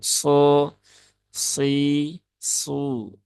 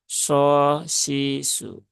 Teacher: pangkal lidah yang naik Nah itulah yang membuat suara yang keluar menjadi lebih tebal